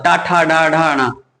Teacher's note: टा वर्ग के व्यंजन सारे मूर्धा से बोले जाते हैं